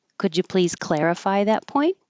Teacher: could you please clarify that point I should be going up